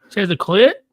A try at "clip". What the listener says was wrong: clip. With a P.